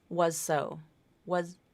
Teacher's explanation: probably there's a little bit of voicing at the beginning but like maybe the last 75% of that z sound is an S